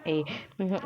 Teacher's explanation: कंठ तालव्य यानी कंठ और तालू से बोलने जाने वाले स्वर हैं